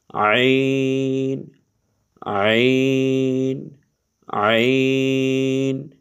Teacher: তো আইন আর গইন, এই আইন এটাও গলার মধ্যে একটু চাপাইয়া পড়তে হয়, হায়ের মতো, হা যেরকম চাপাইয়া পড়তে হয়, এই আইন এটাও গলার মধ্যখান থেকে পড়তে হয়, হলকের মধ্যখান থেকে।